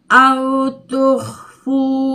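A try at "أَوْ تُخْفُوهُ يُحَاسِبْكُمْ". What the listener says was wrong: hunya mana? Hunya jangan ditinggalin. hunya jangan ditinggalin. Au tukhfuhu yuha. Hunya mana kok? Jangan, bukan fuyu. Fuhu dulu.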